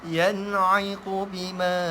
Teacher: yan'iqu bima ma dengung dua harakat.